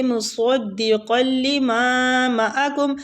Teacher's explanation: صاد پور ہے، حروف ہے، اس کو رخاوے کے ساتھ پڑھیں گے، لما قاف مستعلیہ حروف ہے، پور پڑھیں گے، ما کھینچیں گے، الف مد ہے، معکم، مصدقا لما معکم، الف مد والی میم کو کھینچیں گے، دوسری میم کو نہیں کھینچیں گے، ٹھیک ہے۔